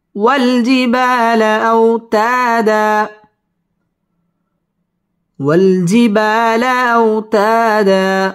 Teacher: ওয়াও ঠোঁট গোল করে উচ্চারণ করতে হবে ওয়াল জিবা মধ্যে তবাই এক আলিফ টান দিয়ে পড়তে হবে ওয়াল জিবালা আও জবরের বাম পাশে জজম ওয়ালা ওয়াও লিনের হরফ তাড়াতাড়ি পড়তে হবে আও তা মধ্যে তবাই জবরের বাম পাশে খালি আলিফ মদের হরফ এক আলিফ টেনে পড়তে হবে